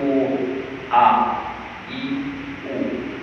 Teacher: Hamzah keluar daripada kerongkong bahagian bawah. Jadi bila kita sebut tu A, I, U, semasa sebut tak ada angin keluar.